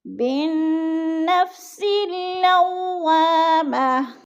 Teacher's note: بالنفس اللوامہ، اب سین کے آگے بھی ایسے ہے، آگے الف ہے اور ساتھ ہی لام ہے، ان دونوں کے اوپر کوئی حرکت نہیں ہے تو ہم نے سین کو لام کے ساتھ ملا کر ادغام کرنا ہے